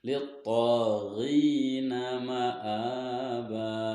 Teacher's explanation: huruf ta berharokat fathah bertemu alif dan setelahnya tidak bertemu hamzah, maka dipanjangkan cara bacanya itu 2 harokat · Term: mad asli